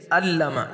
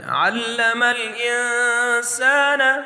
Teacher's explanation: اسی طرح عین کے اوپر ہم عین کو اپنے مخرج سے ادا کریں گے، عین کی جگہ حمزہ کی آواز یہ غلط ہے